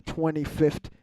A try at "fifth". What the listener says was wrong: You always pronounce the T in fifth. Fifth. You say like 25th.